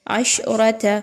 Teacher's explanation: نتا تا الف زبر تا الف مدہ ہے۔ عشرت را زبر را کو پر پڑھا جائے گا کیونکہ را پر زبر ہے